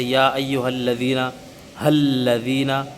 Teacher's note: لام کے اوپر تشدید آئے گی تو لام کو باریک ہی پڑھیں گے ہمیشہ سے۔ یا ایھا الذین آمنوا الذین، یہ وغیرہ وغیرہ قرآن مجید میں بھرا ہوا ہے لفظ لام۔